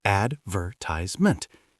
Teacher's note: Americans put the stress on the A at the start